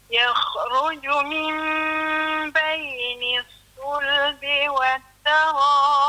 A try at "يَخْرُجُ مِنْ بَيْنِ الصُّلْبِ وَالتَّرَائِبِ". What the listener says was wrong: Ini kha mati ni. Jangan bagi dia jadi macam tawallud ataupun nama qalqalah senang. Yakhru bagi longsok gitu.